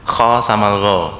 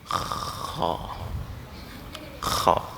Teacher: sama-sama lidahnya naik, pangkal lidahnya. Permukaan lidahnya sama-sama turun. Sama-sama rokhawah. Bedanya di nafas.